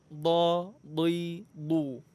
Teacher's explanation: Makhrajnya itu pertemuan antara tepi lidah dengan pangkal gigi geraham atas. Boleh sebelah kanan, boleh sebelah kiri, boleh juga dua-duanya. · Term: Huruf dhad